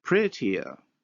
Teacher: look at the glide that is inserted to separate the two vowels